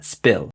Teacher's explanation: And the P in spill is unaspirated